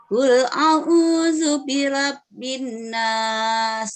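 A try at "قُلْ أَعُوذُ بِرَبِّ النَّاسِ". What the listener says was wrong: Jangan lupa dengungnya, Bu. Jangan lupa dengungnya.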